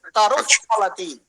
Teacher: आधा उच्चारण करने वाला विसर्ग जो पा से पहले फा से पहले आता है, उसको उपध्मानीय बोलते हैं।